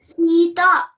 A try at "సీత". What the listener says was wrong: Okay సీత. తా అనేది correct ఎక్కువ స్ట్రెస్ చేయగలదు. బాగా ఏంటంటే కొంచెం స్ట్రెస్ చేస్తున్నట్టు అనిపిస్తుంది కాబట్టి అది స్ట్రెస్ చేయకుండా ఏంటిది సాగదీయకుండా చెప్పాలి.